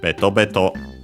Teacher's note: Unlike most onomatopoeias, which we have seen are accented on the first syllable, this one is unaccented, so be careful.